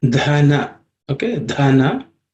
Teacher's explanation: This dha is the fourth letter in the third varga, third class of sounds. It also has to be aspirated.